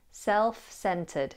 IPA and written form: ˏself`sentəd (auto-centré)